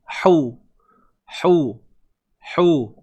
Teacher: Huruf ha pedas. Tengah kerongkong. Sama kedudukan macam huruf ain. Sempitkan.